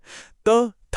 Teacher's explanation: जीभ की नोक सीधे दांतों से टकराती है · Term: दंत्य